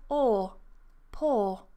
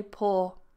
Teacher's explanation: some people pronounce this oo actually as or